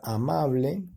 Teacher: Amable lleva la mayor fuerza de voz precisamente en la penúltima sílaba, pero lleva tilde prosódica.